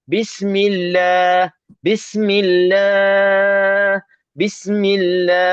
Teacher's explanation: setiap kali lafzul jalalah lafaz Allah kalau berhenti dia boleh panjang sampai enam harakat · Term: Ma'arid lisukun